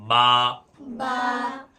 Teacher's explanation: دونوں ہونٹ سے مل کر با ادا ہوتا ہے دونوں ہونٹ کو ملائیں گے با تا یہ سرا زبان اوپر